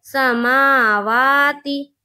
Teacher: खड़ा ज़बर को एक अलिफ के बराबर खींचकर पढ़ेंगे, जैसे समावा। ती ता के नीचे ज़ेर की हरकत है, ज़ेर को जल्दी पढ़ें, थोड़ा भी ना खींचे। मारूफ पढ़ें, मजहूल आवाज़ से बचें